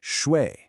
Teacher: It goes down and then back up. It's a third tone.